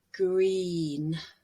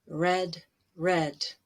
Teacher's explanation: a fairly long sound green and then red red pretty short green your tongue is in front and really high in your mouth and red it's in the front but more toward the middle · the base form is a fairly long sound green and then red red pretty short green your tongue is in front and really high in your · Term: green vowel, long e